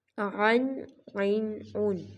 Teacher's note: عین کو بھی یہاں پر حلق سے نکالا جائے گا